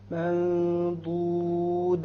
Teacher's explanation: you have a noon sakina followed by a dha. So there will be an ikhfa because it is of the letters of ikhfa.